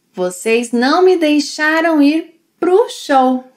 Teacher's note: And she links para o pro